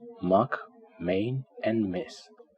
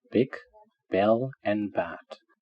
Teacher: What I want to look first is bilabial, which means two lips. These are pronounced by using both lips.